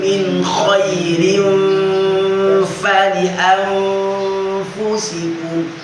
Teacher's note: Fa itu langsung nyentuh ke bibir bawah